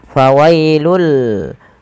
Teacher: pada lafal fawailul di sini tanwinnya langsung dimasukkan ke huruf lam. Fawailul, ya, awalnya fawailun, karena bertemu dengan huruf lam maka tanwinnya dimasukkan ke huruf lam dan diganti dengan huruf lam. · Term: idgham